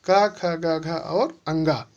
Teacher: क वर्ग का उच्चारण स्थान क्या होता है? कंठ। कंठ का मतलब होता है गला।